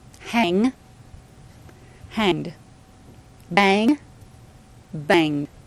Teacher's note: no vowel, no separate syllable, just a D sound added to the end